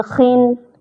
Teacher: خن میں باریکی آئے گی لیکن بالکل باریک نہیں کریں گے